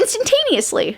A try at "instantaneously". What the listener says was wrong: No, you said instantaneously. You skipped the first T. You always skip the first T.